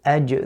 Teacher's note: The jim, the makhraj is from the middle of the tongue with the upper palate.